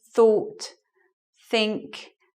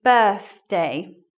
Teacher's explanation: tip for making the sound is you put your tongue between your teeth